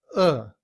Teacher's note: In reduced form we don't say can rather the a sound becomes the schwa uh